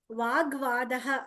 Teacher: వాగ్వాదః అన్నప్పుడు వాక్ plus వాదః, క plus వ కాస్త గ అయింది.